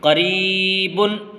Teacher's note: الف مدہ، یا مدہ اور واو مدہ کو کھینچ کر کے پڑھتے ہیں، اس لیے یہاں پر ہم ری کو کھینچیں گے